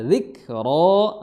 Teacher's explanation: huruf kaf memiliki sifat hams dikeluarkan nafasnya